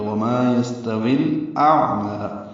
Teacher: حمزہ اقصی حلق سے، عین وسط حلق سے ادا کریں گے اور عین پہ اظہار ہوگا۔ میم کو 2 حرکات لمبا کریں گے، کھڑا زبر ہے، یا نہیں پڑھیں گے۔ · وما یہ مالف مدہ ہے، یستوی سین ساکن پہ ہمس ہے، باریک پڑھا جائے گا، تا بھی باریک ہے، وی یا مدہ ہے، لیکن الاعمى کا حمزہ وصلی ہونے کی وجہ سے واو کو الاعمى کے لام سے ملا دیا تو یستویل ہو گیا۔ وما یستویل اعمى، حمزہ اقصی حلق سے، عین وسط حلق سے ادا کریں گے اور عین پہ اظہار ہوگا۔